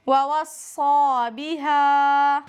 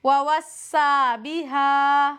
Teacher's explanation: اگر کوئی صاد کو موٹا نہ کرے تو پھر یہ سین بن جائے گا، پھر اس کی آواز ہوگی وَوَصَّى بِهَا۔